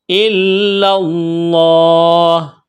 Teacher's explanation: لفظ اللہ کے نام سے پہلے زبر ہے، تو لفظ اللہ کے نام کو موٹا کرنا ہے